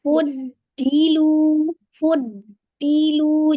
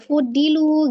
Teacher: istitalah ya memanjang Ya seolah-olah seperti kayak ee ada Jedah ya jadi ketika mengucapkan huruf d sebelum huruf selanjutnya itu seperti ada jeda maka dia ada penahanan dipanjangkan fudilu fudilu jadi jangan langsung foodilu gitu ya J dia